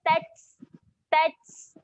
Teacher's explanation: Huruf ta mati sifatnya kena keluarkan angin.